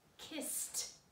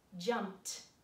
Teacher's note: unvoiced means the letter sound at the end of this word is just breath